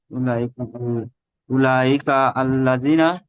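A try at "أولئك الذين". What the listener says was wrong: না, ওরকম হবে না তো। কাফটা তো লামের সঙ্গে জুড়বেন।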